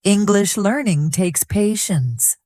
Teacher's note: Did you notice how I stressed the words English and patience.